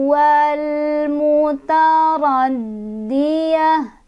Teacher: Ta jadi ha kalau berhenti. wal mutaraddiyah, ya-nya pendek aja ya, lepasin.